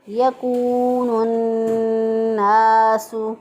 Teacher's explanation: واو مدہ ہے، 1 الف کے برابر لمبا کرنا ہے · نون مشدد کو نون کے ساتھ ملا دیا کیونکہ الف لام جو ہے یہاں پر پڑھنے میں نہیں آ رہا